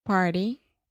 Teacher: One more example of where we often see the flap T in English is when you have an R before the T.